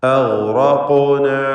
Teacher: അഗ്റഖ്ന തടിപ്പിച്ച് ഇവയെ ഉച്ചരിക്കണം. ഖാഫിൻ്റെ സുക്കൂൻ ഖൽഖല സുഗ്റ നൽകി ശബ്ദം ഹറക്കത്ത് പോലെ ചലിപ്പിക്കണം.